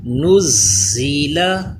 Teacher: اس زا پہ سیٹی پیدا ہونی چاہیے، زبان دانتوں سے پیچھے رہے۔